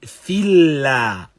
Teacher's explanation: Because that which is before it has kasra, and so the lam now is muraqqaq.